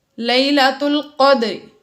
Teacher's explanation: قدری میں دال پھر سے حروف قلقلہ میں سے ساکن ہے، اس لیے اس میں قلقلہ ظاہر کیا